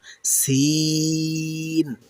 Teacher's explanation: এটি উচ্চারণের সময় একটি সুন্দর এবং পাতলা শীষের আওয়াজ হবে। বলুন সিন, ঠিক যেন বাতাসের একটা মৃদু হাওয়া বয়ে যাচ্ছে।